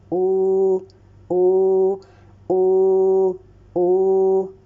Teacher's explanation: The tongue is raised. The back part of the tongue is raised along with the circling of the lips. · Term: bomma waw Medea